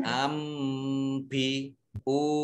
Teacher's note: Nun sukun bertemu dengan huruf ba, bacaan iqlab, dibaca membalik